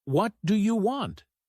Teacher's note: If you say it with a flat tone, it sounds neutral. But if you stress you, like, "What do you want?" It can sound rude or aggressive.